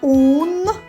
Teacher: перший звук у голосний а наступний- н приголосний твердий